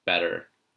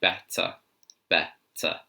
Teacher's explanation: the British accent does actually say each consonant separately